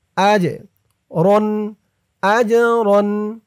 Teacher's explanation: এই জিমটা কলকলার হরফ ধাক্কা দিয়ে পড়তে হবে